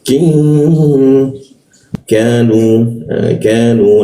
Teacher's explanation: Zalamuna, zalamuna, wadaki, ki kembali di siku tenggorokan, ki, lidahnya diturunkan sehingga rongga udara terbuka dan ada hembusan udara. Wadakin, nun bertemu ka. Nah, ini didengungkan, dengungkan di huruf k-nya ya, ditahan dua ketukan.